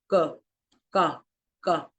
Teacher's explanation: our back of the tongue touches the soft palate while we produce the sound k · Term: velar